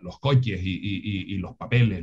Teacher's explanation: esa aspiración de la s final lo hacemos bien perfectamente bien